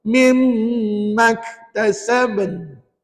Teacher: Maknanya lantunan qalqalahnya ada tapi tidak begitu kuat. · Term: qalqalah sugra